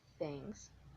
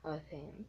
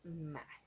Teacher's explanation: The place of articulation is interdental and the manner of articulation is fricative. When we said that it's interdental, it means that it's produced with our teeth and our tongue, but we don't make a hard contact. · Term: TH sound